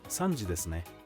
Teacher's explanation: you can confirm the time by responding with ne using a rising pitch, such as, 3時ですね.